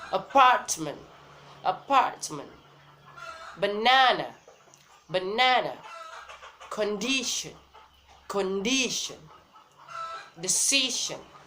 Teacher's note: the first syllable is unstressed and the third syllable is unstressed also. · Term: stress pattern 2